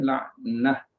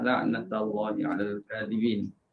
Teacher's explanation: di sini baca dengan huruf ha ya, la'nah ketika waqaf. Jadi ketika wasal tu semua baca dengan ta lah